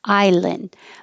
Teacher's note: So you won't hear the D. Your tongue will go to the N position, which is the same as the D position, and then just hold the air. Island. But if there's a vowel after it, then you will hear the D because it will connect to the vowel.